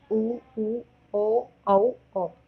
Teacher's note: वर्ताकार स्वर, जिन स्वरों के उच्चारण में होठों का आकार गोल हो जाता है